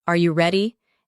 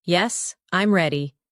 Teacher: Questions usually rise in tone. Are you ready? And answers flow downward. Yes, I'm ready.